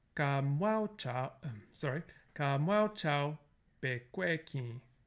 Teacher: The word mwao chao be is one domain of tone sandhi, normally, in the language. So it is considered a word for the purposes of spanning the caesura.